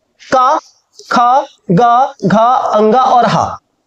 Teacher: क ख ग घ अ ङ और ह जो है आपके कंठ से निकलते हैं